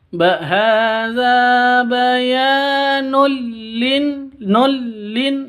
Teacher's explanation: tanwin bertemu dengan lam, masuk tanpa dengung, idgham bila gunnah, masuk ke lam tapi tidak boleh didengungkan.